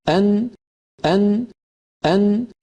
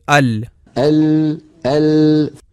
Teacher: نون کا مخرج، ان، ان، ان، اوپر والے تالو کو جب لام کے لیے زبان لگتی ہے اس سے تھوڑا نیچے نون کی ادائیگی ہوتی ہے · مثال کے طور پہ ہم میں جب کوئی کہتا ہے کہ ال، ال، ال، اور پھر کہتا ہے ان، أن وہ تھوڑا نیچے ہے اس جگہ جہاں لام کے لیے زبان لگتی ہے، لہٰذا نون اس طرح ادا ہوتی ہے کہ زبان کا ابتدائی اوپر والا حصہ اپنے بالمقابل مسوڑوں کو جو لام کے مخرج سے تھوڑا سا نیچے ہے لگنا چاہیے، اور ساتھ ناک سے بھی آواز گزرے۔ یہ دونوں چیزیں مل کر نون کو تشکیل دیتے ہیں اور یہی نون کا مخرج ہے۔